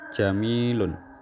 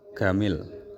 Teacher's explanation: terjadi pada konsonan jim yang dilafalkan dengan g dalam dialek Mesir